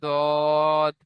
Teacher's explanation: দেখেন সাত থেকে 10 সাত নম্বর মাখরাজ জীবের কিনারা এবং সামনের জীবের কিনারা এবং তার বরাবর উপরের মাড়ির দাঁতের গড়ার সাথে লাগে উচ্চারিত হয় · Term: 7 নম্বর মাখরাজ